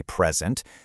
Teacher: If I give you a birthday present, see how the stress is on that first syllable. But if I stand up to present my findings in a meeting, the stress moves to the second syllable. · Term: stress shift